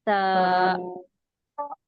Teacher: जबान की नोक को थोड़ा सा बाहर निकाल के ऊपर के दो दांतों को किनारे को टच करेंगे और इसको बारीक पढ़ेंगे